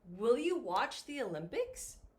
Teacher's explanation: this is a yes or no question so in this case i'm going to go up